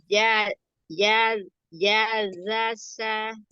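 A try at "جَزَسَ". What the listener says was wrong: Ja, bukan ya. Ja.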